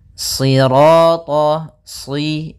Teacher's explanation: Sirata, si, sambil pangkal lidah kita karena shad itu pangkal lidah kita terangkat dan melekat karena dia huruf idbaq